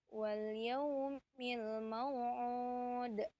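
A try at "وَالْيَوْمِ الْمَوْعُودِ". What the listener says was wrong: Ah, itu kolkolahnya tuh begitu. Nah, jadi jangan terlalu tipis banget ya kolkolah itu.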